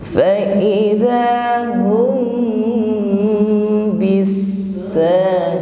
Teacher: Fa idza hum, ada mim sukun bertemu dengan huruf ba, maka di sini ikhfa syafawi